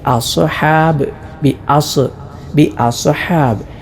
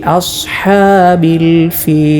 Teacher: സ്വാദിൽ കൽക്കല കൊടുക്കാതെയാണ് ഓതേണ്ടത്